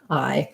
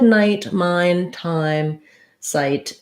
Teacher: the I sound is actually a glide between more of an ah and closing to more of the I sound